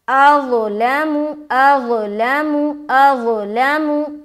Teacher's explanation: तो इस बात का ख्याल रखिए, मोटा पढ़ेंगे लेकिन सीटी की आवाज़ नहीं आनी चाहिए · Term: मोटा हर्फ